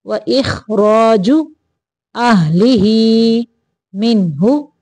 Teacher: नून को ज़ाहिर करना है, गुना नहीं करना